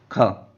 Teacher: स्पर्श व्यंजन, कंठव्य ध्वनि, अघोष और महाप्राण ध्वनि